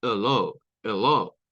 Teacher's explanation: en hello la E podría sonar a E, pero también podría sonar a schwa